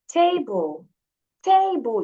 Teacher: So the stress is on the first syllable.